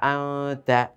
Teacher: আং তা, এভাবে এই যে আং বলে ধরে রেখেছি, এই ধরে রাখাটাই হচ্ছে গুন্না।